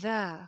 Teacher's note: ذال کے اندر سیٹی کی آواز نہیں آئے گی